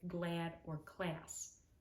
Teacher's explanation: this sounds more nasal because the sound is also higher up in your mouth than a typical a pronunciation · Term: a sound